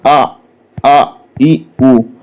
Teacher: लेकिन जब उ बोलेंगे तो ओष्ठ हमारे किधर? आगे की ओर बढ़ेंगे। जब आगे की ओर बढ़ेंगे तो ये ओष्ठ वर्ण कहलाएंगे।